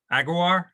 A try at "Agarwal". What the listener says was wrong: It's Agarwal. You have to pronounce the L also. There's no silent letters. I mean, you just pronounce every letter you see.